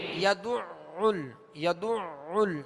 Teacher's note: اب یہ دال پر بھی عین پر بھی پیش ہے اور عین پر تشدید ہے، اس کو 2 مرتبہ پڑھیں گے، دوہرا پڑھیں گے، وسط حلق سے ادا کریں گے